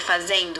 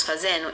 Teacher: Culpa da assimilação, que muda a terminação de ND em N, por ambas serem da família de consoantes chamadas dentais